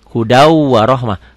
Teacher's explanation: Ditulisnya hudan warohmah, dibacanya hudau. Di atas wawunya ada sidahnya, ada tasdidnya. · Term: Idgham bigunah